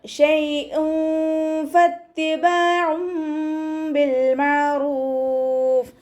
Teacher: തെൻവീനിന് ശേഷം ഇഖ്ഫാൻ്റെ ലെറ്ററായിട്ടുള്ള ഫ വന്നിട്ടുണ്ട്. തെൻവീനിലുള്ള നൂനിൻ്റെ സൗണ്ടിനെ മറച്ചു വെച്ചിട്ട് മണിച്ചോതി കൊടുക്കുക കേട്ടോ. നമ്മുടെ നാവിനെ മുകളിൽ തട്ടിക്കാതെ നോക്കുക.